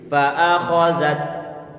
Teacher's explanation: Fa'akhadzat kho-nya tebal, kemudian zalnya kita baca tipis, za pengucapannya ujung lidah tempelkan ujung gisari bagian atas, dikeluarkan sedikit.